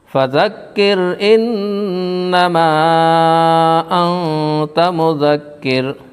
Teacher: نون ساکن کے بعد حرف اخفا کے 15 حرفوں میں سے تا ہے، اس لیے نون ساکن کا اخفا ہوگا۔ کاف کے اوپر تشدید والے حرف کو 2 مرتبہ پڑھتے ہیں۔ تشدید کی آواز میں ایک قسم کی سختی ہوتی ہے